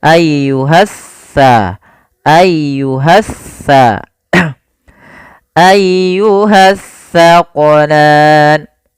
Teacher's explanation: Alif lam yang dia tertulis tapi tidak dibaca lamnya. sehingga langsung diidghamkan ke huruf setelahnya. Jadi seakan-akan huruf sin ya, maaf huruf sa ini double, sa-nya dua. · kalau sa ujung lidah kita wajib menempel dengan gigi seri depan, sedangkan sin dia di tengah-tengah lidah. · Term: alif lam syamsiyah